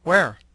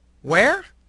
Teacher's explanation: The first using falling pitch to request information, the second using rising intonation to request clarification.